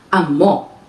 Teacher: this is a noun which is stressed on the second syllable